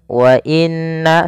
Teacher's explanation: munfasil artinya terpisah Jaiz itu boleh Mad panjang maka di sini nanya dipanjangkan sepanjang empat harakat atau lima harakat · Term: Mad Jaiz munfasil